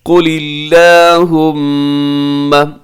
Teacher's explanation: मीम के ऊपर तशदीद है, यहाँ पे गुन्ना कीजिएगा